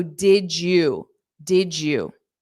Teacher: sorry Dy combined is a j so did you did you that's why you hear that J sound because Dy phonetically creates J